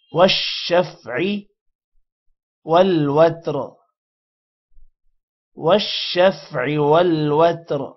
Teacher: والشفع شین پر شد ہے، جس کی وجہ سے واو کے ساتھ ایک بار ملے گا شین اور ایک دفعہ الگ سے پڑھا جائے گا